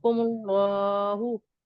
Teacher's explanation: और यहाँ पे मीम पे पेश की हरकत लगी हुई है, तो यहाँ पे इसको मोटा पढ़ेंगे, जबर और पेश के साथ जब अल्लाह आएगा तो उसको मोटा पढ़ेंगे, और अल्लाह को फिर एक जो खड़ा अलिफ लगेगा उसको एक अलिफ में तक खींच के पढ़ेंगे